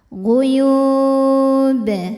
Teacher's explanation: maka yanya dipanjangkan boleh dua atau empat atau enam harakat asal konsisten dalam sekali bacaan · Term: Mad aridli sukun